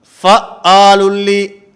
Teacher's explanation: یہ حمزہ بن گیا، عین نہیں رہا، اس میں صفت شدت کی آ چکی ہے، اس میں توسط ادا نہیں ہو رہا۔